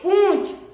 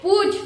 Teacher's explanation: पु का उच्चारण तो गले से करेंगे और जो चंद बिंदी है उसका उच्चारण नाक से करेंगे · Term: अनुनासिक